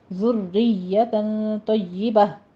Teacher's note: را مرقق ہے، آگے یا پہ تشدید ہے